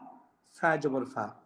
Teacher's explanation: ফা নিচের ঠোঁটের পেট থেকে হবে